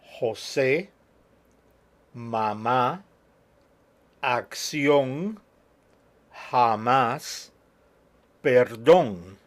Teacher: each and every one of them has the accent on the last syllable